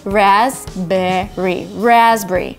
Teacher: P in raspberry is actually silenced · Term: silent letter